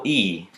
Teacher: and whether the lips are rounded the top left symbol shows the vowel that is made when the tongue is close to the top of the mouth and far to the front